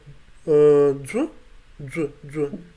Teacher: So labialized affricate voiced affricate with hissing sound.